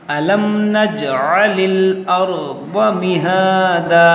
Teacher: جیم میں قلقلہ کریں گے، یہاں میم ساکن کے بعد نون ہے، یہاں پر اظہار شفوی کریں گے، یعنی غنہ نہیں کریں گے